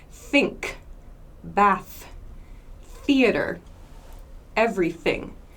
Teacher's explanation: an unvoiced TH sound, we do not use our vocal cords to make this sound